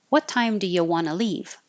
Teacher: do you want to just change want to to wanna